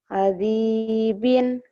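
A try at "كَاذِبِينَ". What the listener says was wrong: Mana? Kadibin. Gak ada yang panjang. Kadibin. Gak ada yang panjang. Kadibin.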